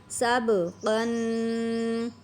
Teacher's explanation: قوف بھی قلقلہ ہے، با بھی قلقلہ ہے، دونوں پر ایسے ہی آواز مخرج سے دوبارہ لوٹ کر آنی چاہیے